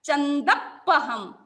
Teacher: चंद पहम तो द पर प्रेशर जाएगा